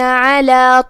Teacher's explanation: یہاں حرف العین ہے، ہم اسے حلق کے درمیان والے حصے سے ادا کریں گے